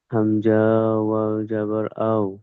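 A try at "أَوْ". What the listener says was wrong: হামজা আপনি টান দিলেন কেন?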